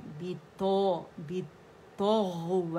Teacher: غین میں رخاوا اور آواز چلے گی اس کی